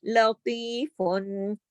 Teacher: یا مدہ کو کھینچا، اتنا ایک الف کے برابر